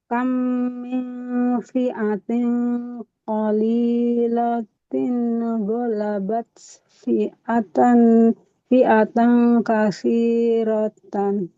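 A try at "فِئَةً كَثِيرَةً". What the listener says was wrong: Jangan kasih roh. Kalau mau di situ kasih roh ya. Golabat fi'atan kasih huruf sa. Coba Ibu, ujung lidahnya tempelkan ke ujung gigi seri atas. Sa.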